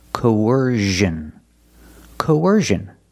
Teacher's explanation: when we link these two vowels there's a sound in the middle it's a sound like a w linking the vowels